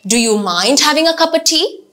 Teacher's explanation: make sure that you are following a rising intonation